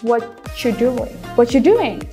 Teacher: Karena R-nya itu di blend, maksudnya ketika mereka disingkat atau diucapkan secara cepat, dia bisa hilang. Jadi, hanya terdengar suara what dan your-nya.